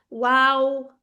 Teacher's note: वाओ पे हंठ पूरे गोल